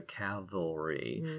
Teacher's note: you know metathesis there you're switching sounds